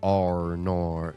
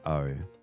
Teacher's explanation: some people have that thicker rhoticization of the end of that sound than others